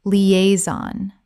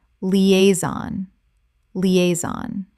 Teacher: Three syllables with the stress on the second.